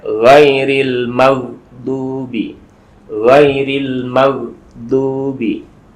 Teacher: Jadi tidak boleh ghairil maghdu, nggak ada kolkolahnya. Jadi ghain itu bukan huruf kolkolah, sehingga tidak boleh memantul ya. Ghairil, landai aja.